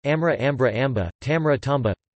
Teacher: The sequence mr becomes mb, via the epenthesis of a stop between the nasal and liquid